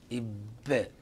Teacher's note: حيث نلاحظ أن الشفتان تنطبق انطباقا محكما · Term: صوت انفجاري